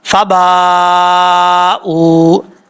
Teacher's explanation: یہاں مد متصل ہے، 3 الف کے برابر لمبا کریں گے، حمزہ کے بعد واو ہے، واو مدہ ہے، 1 الف کی مقدار لمبا کر کے پڑھیں گے۔